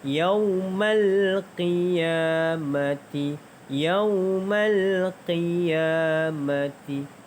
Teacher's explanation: Hukum tajwid yaumal mal kita bunyikan alif lam di situ kerana alif lam qamariyah kan, dan qiya ya dipanjangkan 2 harakat kerana mad asli huruf alif.